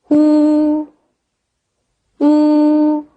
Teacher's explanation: 嘴唇拢圆，双唇向前突出，中间只留一个小圆孔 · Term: 乌音